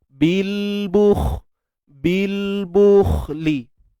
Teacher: Bil bukhli, huruf kha tebal, matikan dia.